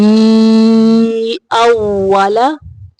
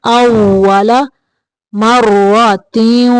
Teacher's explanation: یہاں پہ واو کی ادائیگی کے وقت دانتوں کا استعمال نہیں کرنا، ہونٹوں کو گول کرنا ہے